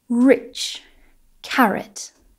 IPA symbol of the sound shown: r